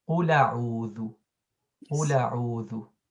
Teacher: So we drop the Hamza basically and move the حركة. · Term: نقل الحركة